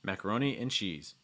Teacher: Macaroni and cheese, heavier stress on cheese.